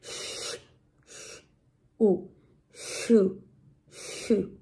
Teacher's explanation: Entonces, cuando hay esas dos vocales, la OU, se unen en un solo sonido, que es más U que O. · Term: diptongo